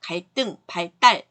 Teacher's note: 한자어에서 리을 받침 뒤에 디귿, 시옷, 지읒이 올 때 우리가 이제 된소리로 발음해요